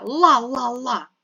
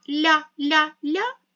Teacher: ла-ла-ла твердо а ля-ля-ля м'яко звук той самий але буква я пом'якшує приголосний звук далі та